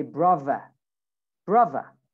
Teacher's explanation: You don't use the R in British accent. So you say brava, brava.